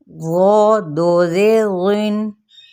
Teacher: حروف مستعلیہ میں سے ہے، تو ہم نے اس کو لمبا نہیں کرنا، نرمی کے ساتھ اس کو پڑھنا ہے اور ساتھ میں اس کو پر کر کے بھی پڑھنا ہے، یعنی موٹا کر کے